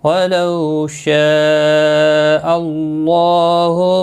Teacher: واولین ہے تھوڑا نرمی کے ساتھ کھینچ کر ادا کریں گے. مد متصل ہے 4 الف کے برابر کھینچ کر پڑھیں گے.